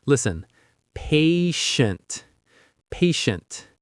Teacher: The ti in the middle makes a shh sound like when you're telling someone to be quiet.